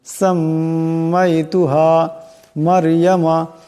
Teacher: সাম্মাইতুহা এখানে মিমের উপর তাসদীদ আছে, মিম মুশাদ্দাদের একালে পরিমাণ গুণনা হবে।